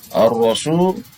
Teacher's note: Matobi waw, wawnya sukun. Sebelumnya waw sukun ini ada huruf yang didoma, maka disebut matobi, dibaca dua ketukan.